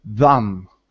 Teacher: the tongue is behind the teeth, and you're making that sound, and you're using your voice. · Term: voiced th